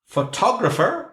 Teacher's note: photographer is on the second syllable